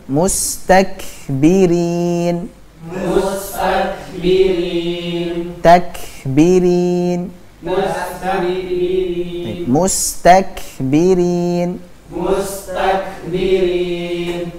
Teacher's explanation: pada kata kutiba ini sifat syiddahnya harus lebih nampak